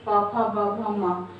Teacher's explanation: पवर्ग जिसका उच्चारण स्थान ओष्ठ